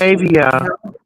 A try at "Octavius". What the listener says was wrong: I'm looking at an S on the end of his name.